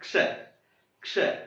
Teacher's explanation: क की हल्की सी आवाज सीधा स पर जोर देने दो